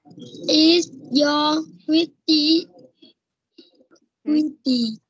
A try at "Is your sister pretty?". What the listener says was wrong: Nào lại sai cái từ sister này rồi. Phát âm riêng nào. Is your sister pretty? Chậm lại thôi, không cần nhanh. Sister. Pretty. Is your sister pretty?